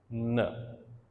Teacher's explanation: Tip of tongue touches alveolar ridge.